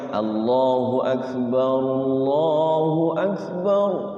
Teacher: Allah pakai a dulu. Jangan pakai o.